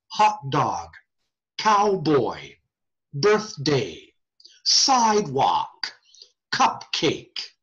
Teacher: there's even emphasis on both syllables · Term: spondee words